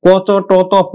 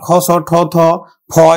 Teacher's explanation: ক, চ, ট, ত, প এগুলো হচ্ছে অল্প প্রাণ, খ, ছ, ঠ, থ, ফ এগুলো হচ্ছে মহাপ্রাণ